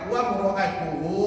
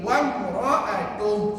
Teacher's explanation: Kalau wasal, wa mura'atuhu, dua harakat hu-nya. Tapi kalau wakaf dibaca dengan pendek